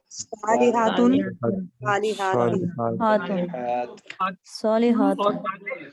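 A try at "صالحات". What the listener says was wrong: हातुन, थोड़ा सा खींचा करें अलिफ को, अलिफ इसीलिए होता है तजवीद वाले बैठे हुए हमसे खफा हो जाएंगे, कहेंगे अलिफ का नाम हो प्रोनाउंसिएशन नहीं काफिरुन, हाँ जी काफिरुन,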